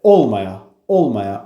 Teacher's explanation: Olmaya sözündə vurğu əvvələ gəlir. Olmaya.